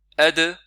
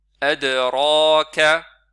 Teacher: Nous avons ici dal qui est courte et qui a qalqala aussi.